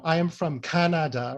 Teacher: I stressed all syllables of the country Canada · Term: word stress